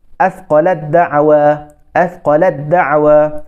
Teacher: Jadi huruf ta tu hilang tu bunyi dia. Tidak ada bunyi.